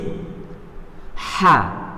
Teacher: keluar dari tenggorokan bagian tengah seperti suara pernafasan, suara bersih dan nyaring. Jadi H itu keluarnya kan dari tenggorokan bagian tengah.